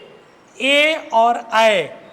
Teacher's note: ए और ऐ ये दोनों ऐसे वर्ण हैं जिनको हम कंठ और तालु दोनों की सहायता से बोलते हैं।